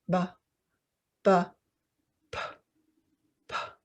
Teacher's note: the paper stays still with a sound for B, ba, the voiced sound, but the paper moves for the sound of P, the unvoiced or breath sound.